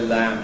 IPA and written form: læm (lamb)